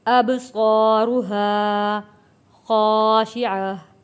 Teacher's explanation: یہاں پہ قلقلہ ادا کیا ہے، اب صا، الف سے پہلے زبر ہو، حروف مدہ ہے، صا، اب صا، را کو موٹا پڑھیں گے اور یہاں پہ بھی حروف مدہ ہے، الف سے پہلے زبر ایک الف کے برابر کھینچ کر پڑھیں گے۔